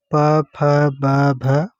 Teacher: ओष्ठ में प, फ, ब, भ, म आते हैं।